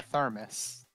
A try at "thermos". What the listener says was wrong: that would be thermos. You're pronouncing it like an I.